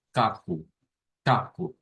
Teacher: La K la encontramos aquí, es en la zona velar, es un sonido que no tiene vibración y es el par de la G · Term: sonido de la K